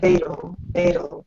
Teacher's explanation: Well, it's automatic for many speakers, so I try hard to pronounce those T's, but many people you will hear fatal, which really is D.